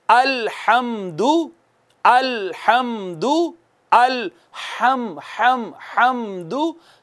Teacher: हा जो है वस्ते हलक से अदा होती है।